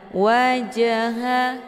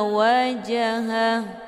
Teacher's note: cara bacanya huruf jimnya dipantulkan dengan pantulan ringan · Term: qqalah